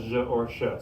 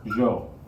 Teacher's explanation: double l makes the gift sound again if somebody's from argentina or certain regions of mexico other places in south america they might say this as je or sho